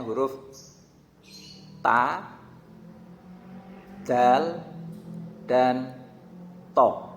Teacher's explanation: punggung ujung lidah mengenai pangkal gigi seri pertama atas sampai mengenai gusinya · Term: makhraj yang nomor 12